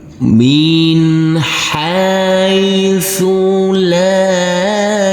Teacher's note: huruf ro ini kita baca dengan dua harakat